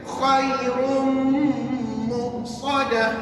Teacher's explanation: Khairun tutup bibir sebab dah sebut mim kena tutup bibir. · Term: idgham